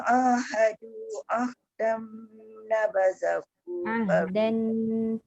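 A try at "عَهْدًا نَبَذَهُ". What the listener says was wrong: Ahdan masuk nun. Jangan, dia mesti jumpa nun. Dia idgham ma'al gunnah kamil, maknanya masuk sepenuhnya nun. Jadi ahdan nabadahu. Dia masuk nun terus.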